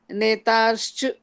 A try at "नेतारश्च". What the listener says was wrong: नेतारश्च, र पूरा है ना, नेतारश्च।